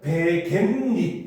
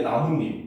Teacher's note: 겐 할 때 니은이 들어가고 닛 할 때도 니은이 한 번 더 들어가는 거죠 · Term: 니은 첨가